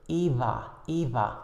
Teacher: the blockage is not complete some air is still allowed to pass through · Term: fricative sound